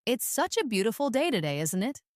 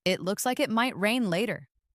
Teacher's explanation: Notice how the intonation rises at the end, making it sound like a friendly remark.